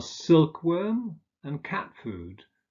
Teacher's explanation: examples are silkworm and cat food where the first element is stressed